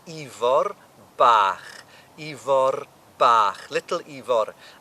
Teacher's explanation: that's Ifor with a rolled R